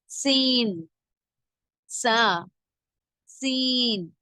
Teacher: நுனினாவின் மேல் பகுதி மேல் கீழ் பற்களுக்கு இடையில் இணையும் போது உண்டாகும் குரல் மெல்லியதாக இருக்க வேண்டும்